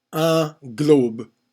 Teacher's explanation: Sounds like one syllable, but if you know about the mute E syllables, the mute E actually constitutes a syllable, even though you can barely hear it